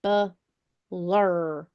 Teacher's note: so when I say that last syllable the last syllable is stressed